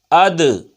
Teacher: ان کو ادا کرتے وقت مخرج میں جنبش سی ہوتی ہے جس کی وجہ سے آواز لوٹتی ہوئی نکلتی ہے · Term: قلقلہ